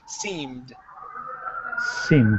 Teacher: the M, as in mom, that is a voiced sound, so this ED will sound like a D.